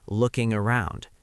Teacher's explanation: For I'm just looking around, pay attention to how looking around flows together. The G at the end of looking links smoothly to the A and around.